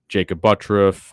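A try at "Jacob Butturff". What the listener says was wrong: Jacob Butterf. Butterf. Can't throw an R in there when it's not there.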